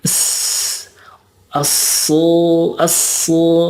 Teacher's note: Dan yang membedakannya juga kalau Sin dan Shod ada sofirnya. Sofir itu mendesis. Jadi asu gitu ya.